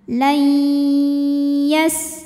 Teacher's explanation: Cara bacanya nunnya dimasukkan ke ya disertai bunyi dengung. Jadi kita tahan. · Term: idgham bil gunnah